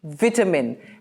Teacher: the V is a dental sound. It has to bite your teeth